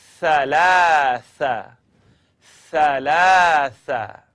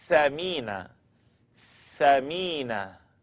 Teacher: blowing the air between your tongue and the edge of the top teeth